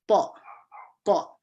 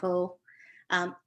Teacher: just make sure that you stop that O sound with a glottal stop. So magandang araw po, make sure there's a stop, not magandang araw po.